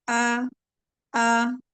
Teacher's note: हमजा की जो आवाज है वो बगैर दबाव के अक्सा अक्सा हलक से निकलती है